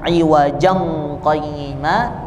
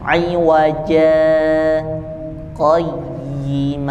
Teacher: dibaca tanwin juga tidak dibaca Mad eh tidak dibaca pendek ya Jadi dibacanya Mad Iwat ya di Mad Iwat bacanya dua harakat awaj qim tidak dibaca lanjut iwajang qayima atau tidak juga berhenti